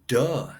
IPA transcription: d